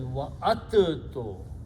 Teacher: Now in the rule of tajweed, the makharij of the letter dal and ta are very close out of the tongue by the teeth. So instead of pronouncing dal and ta, we pronounce ta twice and do not pronounce dal